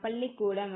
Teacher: லா நாவின் இரு பக்கங்கள் தடித்து மேல் அன்னத்தின் நடுப்பகுதியை தொடுவதால் லகரம் தோன்றும் பொது லகரம் சொல்லுவாங்க.